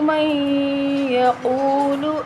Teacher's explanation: مَن پہ ادغام بغنہ ہوگا · واو مدہ ہے، اس کو ایک الف کے برابر لمبا کریں گے، قاف کو موٹا پڑھا جائے گا